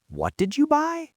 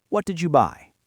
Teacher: Rising intonation on a what question implies surprise or disbelief. If you tell me you bought a new car and I say, "What did you buy?" With a rising pitch, it means I am shocked.